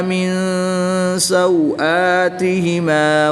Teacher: نون ساکن کے بعد سین حروف اخفا میں سے ہے تو یہاں پر اخفا ہوگا یعنی غنہ زمانی کر کے پڑھیں گے